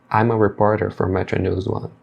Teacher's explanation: E aí você percebe que ao pronunciar, eles vão emendar o M aqui de I'm com o A e vai ficar I'm a reporter for Metro News One.